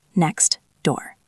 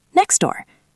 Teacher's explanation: So to make it smooth, we simply delete the T. We throw it away.